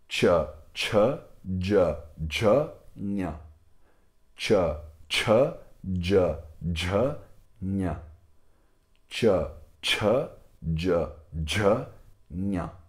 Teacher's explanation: Então, se as guturais elas são pronunciadas bem aqui embaixo, as palatais elas já são pronunciadas um pouco mais para cima, né? Então, bem no lugar do sininho, né? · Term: consoantes palatais